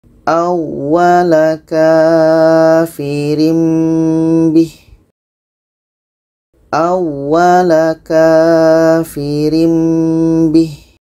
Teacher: Bermakna ini dibaca dengung. Ini tanwin bertemu dengan ba. Kita baca dengung.